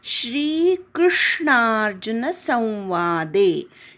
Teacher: श्री हा उच्चार जो आहे तो श आणि र युक्त असावा, त्याच्यामधली वेलांटी दीर्घ असावी